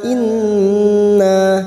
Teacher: nun yang bertasdid gunna musaddadah, kita dengungkan selama 3 harokat